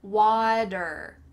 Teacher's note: Make sure that that T has changed to a D